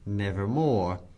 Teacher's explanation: the long o as the most sonorous vowel in connection with r as the most producible consonant